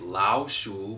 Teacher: both of those words are third tone. But it changes. The first tone changes to a second tone.